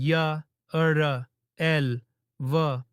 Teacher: जब हम य, र, एल, व बोलते हैं तो ये न तो पूरी तरह स्वर होते हैं और न ही पूरी तरह व्यंजन। इन्हें बीच की ध्वनि कहा जाता है, इसलिए नाम है अंतःस्थ।